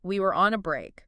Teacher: the specific way David Schwimmer delivered it, that frantic pace, the high rising pitch on the word break, the sort of underlying exasperation and panic in his voice.